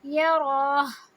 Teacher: سینے سے صرف ہا کی آواز نکالتے · جب وقف کرتے ہیں تو ہا کے اوپر جو پیش ہے اس کو نہیں پڑھتے